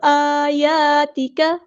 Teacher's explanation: حمزہ اور یا پہ دونوں جگہوں پہ مد اصلی ہو رہی ہے